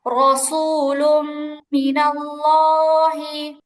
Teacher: তানবিনের পরে মিম আসছে ইদগামে বা গুন্না, গুন্না সহ মিলাই পড়তে হবে।